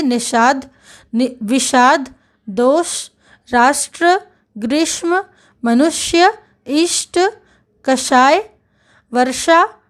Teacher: हिंदी बोलने वाले तालव्य श और मूर्धन्य श का उच्चारण एक सा करते हैं।